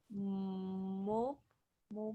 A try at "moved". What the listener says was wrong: Moved, ¿verdad? Con esa D al final. Moved. Acuérdate, cuando pronuncias la D, la E es silenciosa en todas estas.